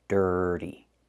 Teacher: The T makes a fast D in the middle.